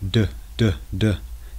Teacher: Note, the mouth and tongue are roughly in the same position, but the vocal cords are vibrating in the D sound and not in the T sound. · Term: voiced